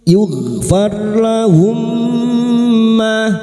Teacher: ro sukun yang didahului fathah kita baca tafkim · ra sukun yang didahului fathah kita baca tafkim farlahum, mim sukun bertemu mim idgham mimi, memasukkan atau mentasdidkan 2 mim masuk pada huruf mim berikutnya disertai mendengung selama 3 harakat idgham mimi.